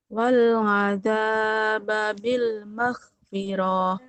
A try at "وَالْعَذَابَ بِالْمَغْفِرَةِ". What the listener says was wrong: Nah, oroknya nggak boleh panjang. Fathah nggak ketemu alif, nggak panjang.